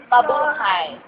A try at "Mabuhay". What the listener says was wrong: You should say it with enthusiastic. Become enthusiastic. It's not enthusiastic.